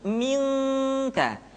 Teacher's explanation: Ketemu kaf, maka dominan kepada huruf eng